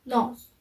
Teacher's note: Its voice sound, its place of articulation is alveolar, and its manner of articulation is nasal.